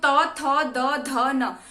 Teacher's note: जबकि त वर्ग अगर आप बहुत ही स्पष्ट उच्चारण अगर करते हैं तो त वर्ग का जो उच्चारण स्थान है वो क्या होता है, वो दंत होता है। ठीक है, दांतों पे हमारी जीभ लगती है।